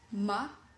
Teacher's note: rising tone imagine the tone of your voice when you ask a question